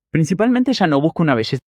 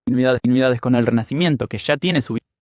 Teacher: here's an example of an Argentine person talking. You will hear the sh sound.